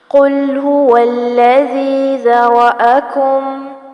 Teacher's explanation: قل یہاں قاف پر کیا جائے گا، اس کو کل نہیں پڑھنا